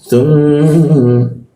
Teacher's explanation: mim bertasydid ini kita tahan 2 ketukan